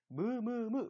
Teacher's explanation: 브랑 똑같은 입 모양에서 무를 해보면 공기의 절반이 코로 지나가면서 브가 아니라 무라는 소리가 나게 돼요. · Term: 비음